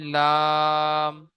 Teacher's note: আট নম্বর মাখরাজ। জীভের আগার কিনারা এবং সামনের উপরে দুই পাশের দাঁতের গোড়ার সাথে লাগিয়ে উচ্চারিত হয় লাম